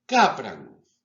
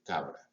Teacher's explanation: O sea, conservan el punto de articulación bilabial, alveolar y velar, pero pasan de sordas, no intervienen en las cuerdas vocales, a sonoras, intervienen en las cuerdas vocales